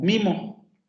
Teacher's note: Pero cuando hace las transcripciones anchas, entonces cambia la representación del fonema, porque dice, claro, en un ejemplo como mimo, como esta vocal aparece antes de una nasal bilabial sonora, entonces esta vocal se nasaliza